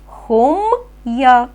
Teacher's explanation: хом твердий і як далі ми чуємо й а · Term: Роздільна